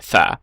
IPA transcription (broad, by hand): θ